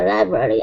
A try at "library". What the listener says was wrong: Give me a good R at the very end. Instead of library, library.